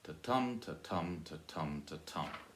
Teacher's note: 8 syllables, alternating soft and stressed.